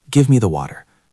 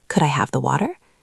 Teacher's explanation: Question, could I have the water? Do you hear how the voice goes up at the end? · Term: rising melody